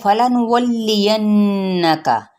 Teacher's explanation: نہ فا کی حرکت کو لمبا کرنا ہے، نہ لام کی، نہ نون کی پیش کو۔ اب واو کی زبر کو لام کے ساتھ ملائیں گے اور نون پہ یہاں پہ غنہ کریں گے، ینکا، ٹھیک ہے؟